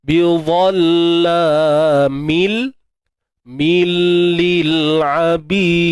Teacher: Masukkan tanwin ke dalam huruf lam bila gunnah tanpa dengung. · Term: idgham bila gunnah